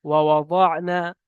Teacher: আইনটা গলার ভিতরে উচ্চারণ হয়, সাকিন হবে জ।